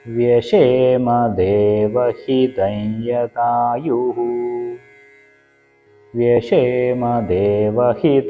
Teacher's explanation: ഹിതയതായുഹു എന്നാണ് വരുക ഇതം എന്നുള്ളതിന്റെ മ് യഥായുഹു എന്നുള്ളതിന്റെ യുമായിട്ട് ചേരുന്ന സമയത്ത് മ് മാറി യെ എന്നാവും അനുനാസികമായിട്ടുള്ള യു അപ്പൊ യകാരത്തിന് ഇരട്ടിപ്പ് വരും